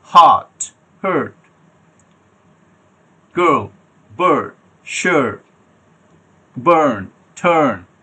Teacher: তো মনে হচ্ছে না র এর মতো উচ্চার, র আমি প্রনাউন্স করছি কিন্তু এখানে র প্রনাউন্স হচ্ছে না। লাস্ট সিলেবলে ব্রিটিশ ইংলিশ প্রনাউন্সিয়েশনে এটা র সাউন্ডটা প্রনাউন্স হয় না।